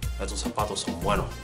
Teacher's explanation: In Cuba, it might sound like, estos zapatos son buenos. So the S's kind of go away besides the zapato sound.